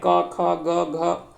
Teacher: क वर्ग का संबंध जो वो कंठ से है, यानी क वर्गों के जितने भी वर्ण हैं उसका उच्चारण करने के लिए जब उच्चारण होता है वो कंठ से होता है।